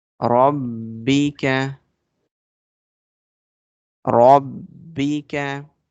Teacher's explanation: Ra sound will be bold because it's coming with fatha on it. We connect ra with ba.